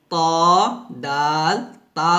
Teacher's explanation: ত দাল তা উচ্চারিত হয় জিহ্বার আগা সামনের উপরে দুই দাঁতের গোড়ার সঙ্গে লাগিয়ে